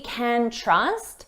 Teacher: I don't know if we can, notice here, we can trust. When can is the auxiliary verb, so it's not the main verb, we reduce this to kin, and it's very unstressed sound.